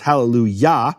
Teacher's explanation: yah is always the emphasized syllable